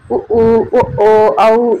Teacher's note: உ ஊ உதெல்லாம் இதழ்களை குவிக்கிறதுனால வரும்